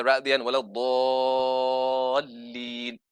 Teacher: So for example, you've got, everyone recites Surah Al-Fatiha ra'diyan wala dallin, 6 harakat. Yeah, the lengthening of the alif mad after dad